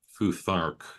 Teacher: But actually, if you want to be excessively precise about it, that would be something like Futharch using a nasalized vowel there, second vowel